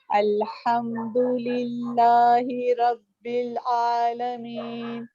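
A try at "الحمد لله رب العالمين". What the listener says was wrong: عالمین. آئین کا ساؤنڈ تھوڑا صحیح کیجیے کائنڈلی.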